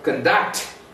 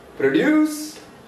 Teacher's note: The stress is on second syllable when it is used as verb.